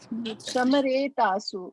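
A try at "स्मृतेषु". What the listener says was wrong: smare. It's not even some. If it was some, then the S would have been full, right? It's a half S, right? Half sa. So sma.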